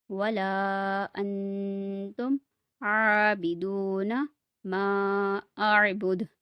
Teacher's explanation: ان پہ گننا ہوگا کیونکہ آگے اخفا کے 15 حروف میں سے ایک حرف ہے تا · واو ساکن سے پہلے پیش ہے، واو مدہ ہے، اس لیے اسے بھی کھینچ کے پڑھیں گے